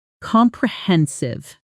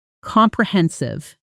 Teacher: The stress lands on the third syllable